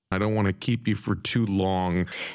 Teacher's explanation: The T in the NT blend, want, is deleted, and as the to is reduced to ta, the result is wanna.